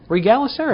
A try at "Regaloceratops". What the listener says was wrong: No, but you forgot the owl.